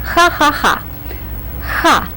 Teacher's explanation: it comes with a very strong very pronounced H sound there's no corresponding sound in the English language but try to make your age sound very loud very pronounced